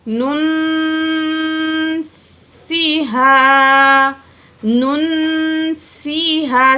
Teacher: نون پیش نون، نون، نون کی پیش کو نون ساکن سے ملا کے پڑھیں گے، اور نون ساکن کے بعد حروف اخفا میں سے سین آ رہا ہے، ٹھیک ہے؟ نون کی آواز کو ناک میں چھپا کے پڑھیں گے · سین میں سیٹی کی آواز ہوگی